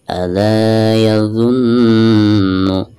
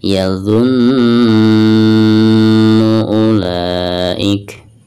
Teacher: karena nun yang bertasydid itu merupakan huruf gunah. Jadi selain ditekankan itu harus ada gunah ya, 2 atau 3 harokat. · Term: hukum gunah